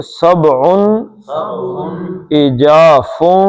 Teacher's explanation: نون کے تنوین کے بعد عین آ گیا جو ہلکی ہے، اظہار کریں گے